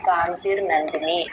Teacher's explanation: చాలామంది శాంతి స్వస్తిమతి కాంతి అని ఆపుతారు కాంతి కాదనిది కాంతిహి విసర్గ కలుసుకోవాలి కాంతిర్ నందిని అలా చెప్పాలి